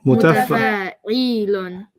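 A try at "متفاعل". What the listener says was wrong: The E is too long. There's no ya there. Mutafa'ilun.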